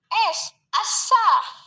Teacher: Cara artikulasinya itu geseran atau frikatif, yaitu lidah di lengkungan memanjang untuk mengarahkan udara melewati tepi gigi. Tempat artikulasinya di palatal atau langit-langit keras, juga S, asa. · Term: fonem S